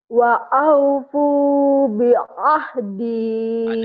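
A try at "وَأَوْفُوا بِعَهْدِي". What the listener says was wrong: Adanya bukan gitu nih. Wa aufu bi ahdi. Agak susah ya ain. Bi ahdi. Coba lagi.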